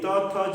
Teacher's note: त, थ जब हम बोलेंगे तो दांतों से उसका प्रयोग, यानी दंत से होता है